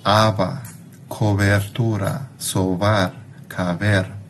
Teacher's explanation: los labios no se cierran completamente, sino que dejan pasar una pequeña cantidad de aire entre los labios, lo que produce un poco de fricción acústica, produciendo el fono, el sonido representado en el AFI por ese símbolo que es un poco distinto de una B. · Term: beta